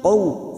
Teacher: qaw fathah bertemu waw sukun huruf layin kita lunakkan